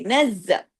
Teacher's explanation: زا ڈبل ہے، تشدید والا ہے، باریک لیٹر ہے